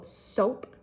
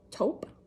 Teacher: when we make our T sound our tongue tip touches what we call our alveolar Ridge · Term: T substitution